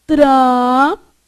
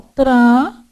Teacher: não pronuncia o N, porque é nasal